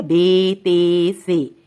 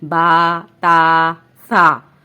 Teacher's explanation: عربی حروف تہجی میں بڑی یہ کی آواز اے نہیں ہے بلکہ یا ہے